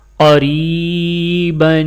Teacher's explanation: ایک الف کے برابر کھینچ کر پڑھیں گے اور را کے نیچے زیر ہے تو را باریک پڑھی جائے گی